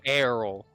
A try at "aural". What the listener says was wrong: It doesn't start with an E. Aral. Oral.